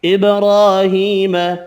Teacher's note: با ساکن پر قلقلہ کریں گے